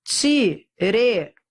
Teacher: E é um ditongo decrescente. Porque eu vou da vogal para semivogal.